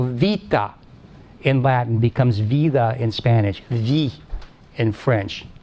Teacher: these unvoiced consonants like t, k, p, when they're between vowels, soften. Process called lenition.